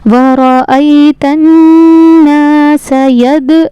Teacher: दाल पे कलकला होगा, कलकला यानी इसको पढ़ते वक्त इसकी आवाज़ लौटेगी।